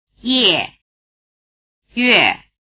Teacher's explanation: the letter E has the sound value A after both semivowels pronounced with the tongue in the E position